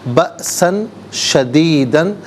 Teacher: بأسن میں حمزہ ساکن ہے، جھٹکے کے ساتھ پڑھیں گے، اور سین پر 2 زبر کی تنوین ہے، اس کے بعد شین حرف اخفا ہے، تو یہاں پر بھی اخفا کریں گے۔